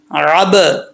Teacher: عین کو کلیئر کرنا ہے, واضح کر کے پڑھنا ہے, حمزہ نہیں پڑھنا